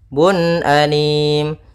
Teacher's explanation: harus kita jelaskan suara unnya karena dia bertemu dengan hamzah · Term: izhar halqi